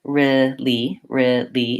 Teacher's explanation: make sure my R is back and my L is forward